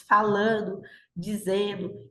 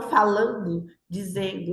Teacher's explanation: há uma tendência de redução desse dígrafo ND, né, principalmente nas formas do gerúndio. Então, a gente diz falando, dizendo, e não falando, dizendo, né, traz uma certa nasalização.